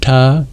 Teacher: the retroflex, the Ta Varga, that's made with the tongue curled back